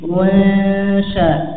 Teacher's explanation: Shin ini memiliki sifat istifal, tipis, ya, maka ikhfanya juga tipis, ya. Bukan ini tebal, tapi dibaca tipis, ya.